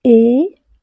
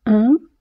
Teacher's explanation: le son « et » qui est une voyelle orale et le son « un » qui est une voyelle nasale